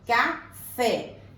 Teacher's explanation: Então, aqui a sílaba tônica é o fé. Então, aqui ela é oxítona.